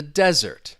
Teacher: the noun, the desert, okay, the noun stresses on the first syllable.